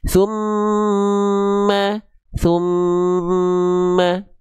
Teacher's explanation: dia punya dua makhraj, yaitu makhraj misalnya huruf mim bibir, tapi makhraj berikutnya melipir ke hidung. Maka tahan dulu dua harakat pelafalannya. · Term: ghunah